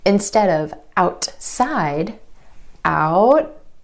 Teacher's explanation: The tongue stays up for the T and goes straight into the S sound. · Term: held T